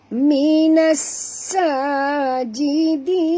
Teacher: Minas alif lam syams ya, dan bunyikan dengan jelas sofir pada sin yang mati